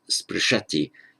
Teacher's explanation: Again, if sprish were a first-class verb, it would most likely make its present tense in sparshati, that's strengthening the vowel from ri to ar, sparshati, but it's not. Stress on the end, sixth class, is sprishati, leaving the root unchanged.